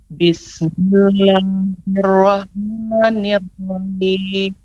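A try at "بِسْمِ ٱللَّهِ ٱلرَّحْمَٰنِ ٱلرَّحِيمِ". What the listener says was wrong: Ya, agak sedikit putus suaranya. Bismillah, di sini ada tasydid. Maka pengucapannya Bismillahirrahmanirrahim.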